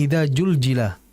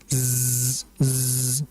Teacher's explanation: Jadi hati-hati di suratu azzalzalah pada huruf za. Karena za ini merupakan huruf yang keluar dari lidah bagian ujung menempel dengan gigi seri bagian bawah dan padanya memiliki sifat safir